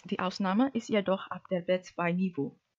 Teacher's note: Lastly, the final intonation uses terminal cadence.